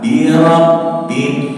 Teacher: huruf nun dan huruf mim keluar dari rongga hidung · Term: gunnah